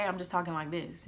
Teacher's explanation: if I speak every day I'm just talking like this you don't hear any of the t's I'm saying